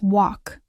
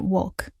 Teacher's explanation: A lot of learners want to say the L clearly, but in natural English that L disappears. So it's walk, not wolk. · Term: silent L